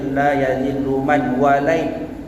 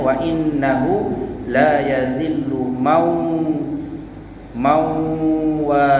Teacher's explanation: nun mati jumpa dengan huruf waw, yang hukumnya idgham ma'al guna, memasukkan dengan dengung